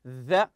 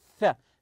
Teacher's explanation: them the th sound here does have a vibration So when you say the so there's a vibration here actually you can feel the vibration unlike when you say th there's no vibration